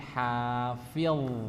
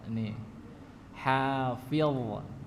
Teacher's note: Ujung lidah yang atas ya, tepi lidah bagian atas menempel ke gigi seri bagian depan. Pangkal lidah terangkat sehingga mengeluarkan suara yang tebal ya. Bukan hafil tapi hafil. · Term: huruf dha